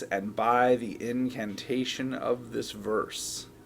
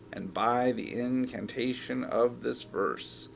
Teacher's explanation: Of is the word that's getting promoted here by this literary source of stress.